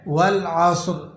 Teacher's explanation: اور را کو آپ نے، یہ را پر دو زیر کی تنوین ہے، یہ ویسے تو باریک پڑھا جائے گا کیونکہ را کے نیچے حرکت ہو تو یہ باریک پڑھی جاتی ہے، لیکن وقف کی حالت میں یہ را ساکن ہو جائے گی، تو اب آپ نے اس کو موٹا کر کے پڑھنا ہے